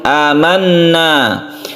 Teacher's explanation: Cara membacanya yaitu dimasukkan ke huruf ya dan dipanjangkan. Amanna, gunna musyaddadah, nunnya ini dibaca panjang